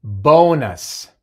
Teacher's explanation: El sonido largo de la O y el sonido corto de la U, el schwa.